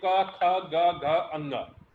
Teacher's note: क की आवाज हमारे कंठ से निकल रही है